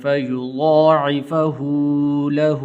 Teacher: ہا الٹا پیش اس کو لمبا کرنا ہے